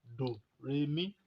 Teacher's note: Torí náà, do, re, mi ni àwọn àmì ohùn Yorùbá. Do, òun lọ sísàlẹ̀. Re, òun wà láàárín. Mi, òkè ni òun lọ, gẹ́gẹ́ bí èémí ohùn wa náà ti lọ sókè.